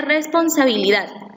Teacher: Por ejemplo, la palabra responsabilidad lleva la sílaba tónica en la sílaba dat. Tiene su acento prosódico en la última sílaba, pero no se tilda.